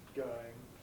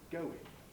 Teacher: this tendency when we have a diphthong followed by a weak vowel to lose the second part of the diphthong thus saying going rather than saying going similarly fire science power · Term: smoothing